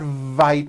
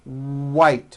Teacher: it's not Vite with a V it's white with a W